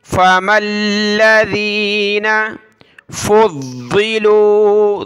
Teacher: زبر فا، میم کو لام کے ساتھ ملایا، فَمَا الَّذِينَ فُضِّلُوا، ضاد کو سخت کرنا ہے تشدید کی وجہ سے